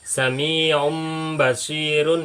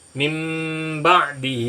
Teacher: iqlab itu artinya membalik membalik itu membalik suara nun mati menjadi mim mati